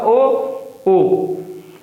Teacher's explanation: कंठ तालव्य मतलब भीतर से भी आवाज आएगी कंठ से, और तालव्य और तालु से भी ए, ठीक है। कंठोष्ठ, कंठ और ओष्ठ मतलब भीतर से आवाज आएगी और होठों से आएगी